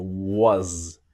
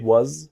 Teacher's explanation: the s in was sounds like a z